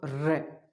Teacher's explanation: जैसे मैं उच्चारण करता हूँ र, अब र का उच्चारण किया, आप भी उच्चारण करके देखें कि र का उच्चारण किया तो जीवा 2-3 बार कंपन सा महसूस कर रही है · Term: प्रकंपित व्यंजन